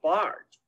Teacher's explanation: you should pronounce it a little longer and say like Bart instead of Butt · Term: long A